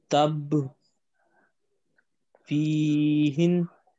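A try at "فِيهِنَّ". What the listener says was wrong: نون پہ کیا ہے؟ شاد. کیا کرنا ہے اس کو؟ شاد پڑھنی ہے.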